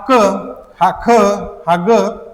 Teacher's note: यांचा उच्चार आपला कंठामधून होतो म्हणून यांना कंठ वर्ण म्हणतात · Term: कंठ्यवर्ण